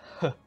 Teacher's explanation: Last but not least, we have h, which is quite a special type of fricative. It is produced with a glottal constriction, which is where the flaps of the glottis open just far enough for air to pass through and undergo friction.